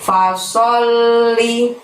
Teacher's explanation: Sok di sana menghadap lam tasydid, maka pada saat mengucapkan sol ditahan, ditekan, baru bunyi li. Li-nya pendek ya.